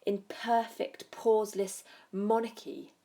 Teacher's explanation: She suggests with her use of alliteration here, these sort of spitting plosive p sounds